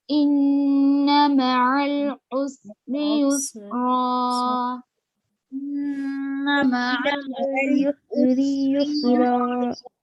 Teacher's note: را پہ دو زبر ہے تو ایک زبر کے ساتھ الف پڑھ رہا ہے